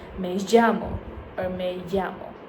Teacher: you might say the double L more like a J sound or a ZH sound, like in the English word measure